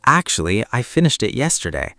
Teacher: And notice the intonation. Actually, it goes up a little then down. It's friendly.